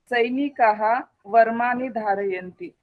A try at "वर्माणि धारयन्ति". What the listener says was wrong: वर्माणि धारयन्ति। वर्मा मा दीर्घः।